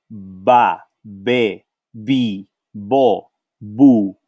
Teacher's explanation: we use the same bilabial sound